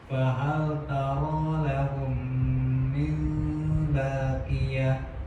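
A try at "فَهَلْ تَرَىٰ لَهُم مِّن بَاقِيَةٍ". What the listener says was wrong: ya, bagus, ahsan.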